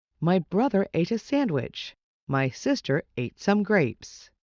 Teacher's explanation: Do you notice a pattern? Every other syllable is stressed. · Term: Rhythm